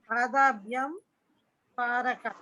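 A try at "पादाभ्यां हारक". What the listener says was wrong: హా అండి, పా కాదు, హారక.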